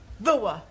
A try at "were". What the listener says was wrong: Yeah, try saying voa without the the. Try again, but this time, don't say ower, just were. Were.